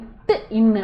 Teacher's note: நாவின் நுனி அன்னத்தின் நுனியை பொருந்துவதால் பிறக்கும்